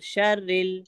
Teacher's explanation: अब रा को हम मोटा नहीं पढ़ेंगे क्योंकि रा के नीचे जेर है, तो रा को हम बारीक पढ़ेंगे